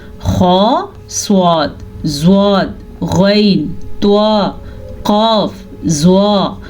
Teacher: ان سارے حروف کو میں نے منہ بھر کے پڑھا ہے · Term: موٹے